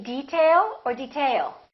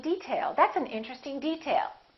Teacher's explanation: If it's a noun, we say detail. That's an interesting detail. First syllable stress.